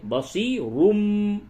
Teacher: تنوین کے بعد با ہے، اس جگہ پہ قلب ہوگا، قلب، یعنی کہ تنوین کو یہ میم سے بدل کر کے پڑھیں گے